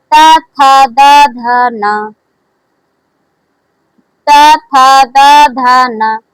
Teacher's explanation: त वर्ग का उच्चारण स्थान दंत से होता है। त वर्ग का उच्चारण स्थान देखिए दांत हमारा स्पर्श कर रहा है।